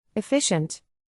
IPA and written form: ɪˈfɪʃ.ənt (Efficient)